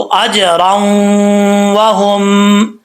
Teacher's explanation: जब ये रा को हम डायरेक्ट वाव से कनेक्ट करेंगे तो बीच में अलिफ गिर जाएगा। ऐसा नहीं होगा कि अजराऊं हम पढ़ेंगे, अलिफ नहीं पढ़ेंगे।